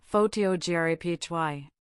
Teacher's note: Photography has the stress on the second syllable